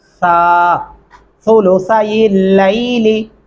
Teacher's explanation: دونوں سا نرمی سے ادا ہوتے ہیں، دانتوں کے نیچے زبان کی نوک آ جاتی ہے